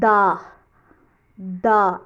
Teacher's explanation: ज़ुबान की नोक और ऊपर के दांतों की जड़ से अदा किया जाता है दाल। और इसकी लाइट साउंड है दा, दा, ऐसी आवाज़ आती है, और लेटर है दाल।